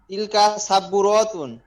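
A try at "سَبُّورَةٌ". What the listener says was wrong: এই যে সাব্বু রতুন, এরকম টান আসলে এখানে কিন্তু আলিফ নাই, এজন্য সাব্বু রতুন, সাব্বু রতুন।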